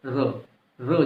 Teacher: वर्ड्स क्या बताया था मैंने, दंतमूल यानी कि मसूड़े। तो जीवा जो है मसूड़ों को एक से ज्यादा बार टच करती है, बाकी सब में एक एक बार कर रही थी, इसमें ज्यादा बार टच करती है, तो क्या हो गया, वर्ड से हो गया, सॉरी लुंठित हो गया।